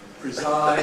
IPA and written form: prɪˈzaɪd (preside)